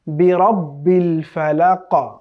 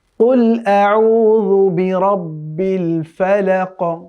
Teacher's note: ফালাক কফের উচ্চারণটা শেষে গিয়ে দ্বিরুক্তি করতে হয়। এটি হচ্ছে কলকলা সাউন্ড।